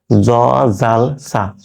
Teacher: এই তিনটা উচ্চারণ জিহ্বার আগা, সামনের দাঁতের আগার সঙ্গে লাগিয়ে।